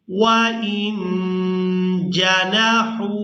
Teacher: وَإِن جَنَحُوا، ہا واو پیش، حو کھینچ کر ادا کریں گے کیونکہ یہ واو مدہ ہے